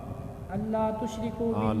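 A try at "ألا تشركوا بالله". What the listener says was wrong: لام کیوں چھوڑ رہے ہیں؟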